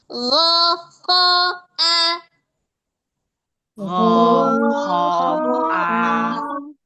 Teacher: Ghain dia tebal, kho dia tebal, hamzah dia tipis. Hati-hati. Gho dia bulat.